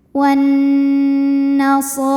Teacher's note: Nun tasydid dihukumi dengan gunnah musyaddadah karena nunnya bertasydid atau wajibul gunnah ya, maka dibacanya nun didengungkan.